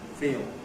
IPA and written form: fiːɫ (feel)